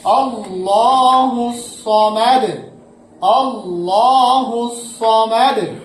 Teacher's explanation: এখানে অক্ষ করলে সমাদু হবে না, সমাদ, সমাদ কলকলা হয়ে যাবে।